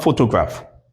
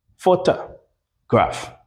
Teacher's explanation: the weakened o sound or o sound becomes a schwa sound.